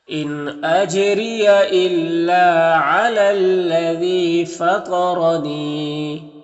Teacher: یہاں پر یا مدہ ہے تو ایک الف کے برابر کھینچیں گے